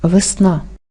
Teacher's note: в ненаголошеній позиції вимовляється не чітко а з наближенням е наближається до и а и наближається до е порівняйте слова весна транскрипції це слово